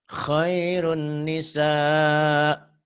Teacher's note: Ini nun mati atau tanwin ketemu nun dan mimih idgham bigunah. Dimasukkan, diidghamkan, ditahan.